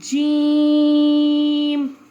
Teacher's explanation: یہ ہے جی جیم، یہ مد نظر آ رہی ہے آپ کو؟ اس کو 3 الف کے برابر کھینچتے ہیں